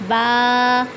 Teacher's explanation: با بند ہونٹوں کے گیلے حصے سے ادا ہوتا ہے